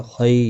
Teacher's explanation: خی یا لین ہے، تھوڑا نرمی کے ساتھ کھینچ کر ادا کریں گے